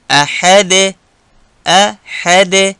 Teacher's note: د احد په پای کې قلقله، ځکه دال د قلقلې توری دی. د سورة الفلق په درس کې مو قلقله وویل چې د قلقلې توری 5 دي: قاف، طا، با، جیم، دال.